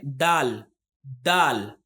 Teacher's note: صرف بولیں گے دال دال، اور اس کو جب ہم ادا کرتے ہیں تو جس طرح سے ہم نے تا ادا کیا تھا اسی طرح سے دال کو بھی ادا کریں گے. یعنی ہمارے جو زبان ہے وہ زبان کی نوک جو ہے وہ دانتوں کے جڑوں سے مل کر ادا ہوتا ہے دال دال. اس طرح سے ہم دال کو ادا کریں گے.